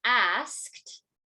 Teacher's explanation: in a word like asked, right, it's going to sound more like KT